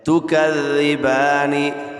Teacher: اکثر لوگ اس کو پڑھتے ہیں تکذبانی، یہ تکذبانی نہیں ہے، ذال ہے، زبان کا سرہ اور دونوں دانتوں کے اندرونی کنارے سے، زبان کا سرہ اور دونوں دانتوں کے اندرونی کنارے سے ذال ادا ہوتا ہے